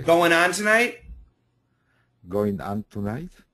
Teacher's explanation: get rid of the G. There's no G.